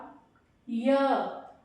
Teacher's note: य, य देखो साउंड आपके गले में है, पर एक चीज और नोट कीजिए, जब आपने य बोला तो जीभ का मध्य भाग क्या कर रहा है, प्रेशर में है, बल आ रहा है उस पर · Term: तालु